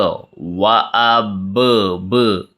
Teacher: اب با پہ قلقلہ، دوبارہ آواز لوٹتی ہوئی آ رہی ہے